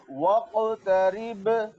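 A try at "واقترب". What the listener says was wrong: निशान लगा दे इस पे, वाव में होंठ मुकम्मल तौर पर गोल होने चाहिए।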